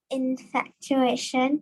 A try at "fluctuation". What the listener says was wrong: Not infatuation, it's fluctuation. Fluctuation. Not the F-U-C-K, that word is because there's an L sound. Fluctuation.